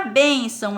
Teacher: bênção tem 2 sílabas. E a que está acentuada é penúltima, então ela não é uma oxítona, logo não vamos circular.